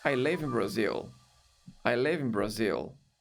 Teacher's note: Se eu não quiser destacar em nenhum ponto da frase, o live vai ter tendências de ser mais forte.